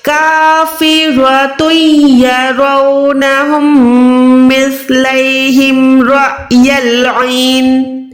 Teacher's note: عین حلق کے درمیان سے، نون پہ یہاں پر ہم وقف کر رہے ہیں تو یہ زیر جو ہے ساکن بن جائے گی، نون ساکن ہو جائے گا۔